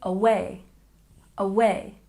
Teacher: And away, we stress the second syllable.